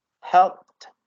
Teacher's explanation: when we have p sound and then ed, we just say t sound